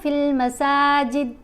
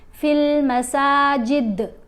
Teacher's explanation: یہ دیکھیں یہاں پر قوف ساکن ہے، جزم ہے نا تو ساکن ہوگی، لیکن یہاں پر دال ساکن نہیں ہے، وقف کرنے کی صورت میں ساکن پڑھا گیا ہے. تو ان کی آواز کو ہلا کر پڑھتے ہیں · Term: کلکلا